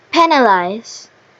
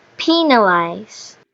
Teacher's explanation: the correct pronunciation um shows primary stress on the first syllable. P, the stressed vowel has the highest amplitude and the intensity showing strong stress.